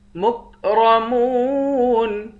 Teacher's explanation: فی جنات مکرمون، را کو موٹا پڑھیں گے، میم کو واو کے ساتھ ملا کر واو کو ایک الف کی مقدار کھینچ کر پڑھیں گے، آخر میں نون ساکن ہے۔